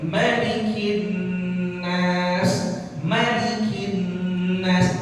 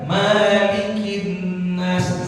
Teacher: Sebagai contoh yang sering terjadi di masyarakat, itu ketika orang baca surah An-Nas, pada kalimat Malikin Nas, itu Malikin Nas mimnya semua riwayat bacaan Quran dibaca pendek. Malikin Nas, jangan dibaca panjang.